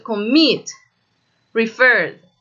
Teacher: miren que el estrés de la palabra, la parte fuerte de la palabra, está al final.